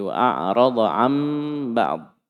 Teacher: Nun sukun diganti menjadi mim.